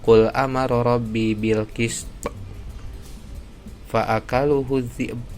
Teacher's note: Itu harus qalqalahnya ada ya, karena di akhirnya itu pada wakafnya itu ada huruf qalqalah.